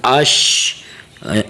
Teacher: منہ کو تھوڑا سا گول کر کے اش آواز نکالیں شین کی